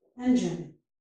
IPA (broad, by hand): n plus dʒ